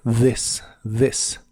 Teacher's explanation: como vimos la th de esta palabra se pronuncia como de vibrante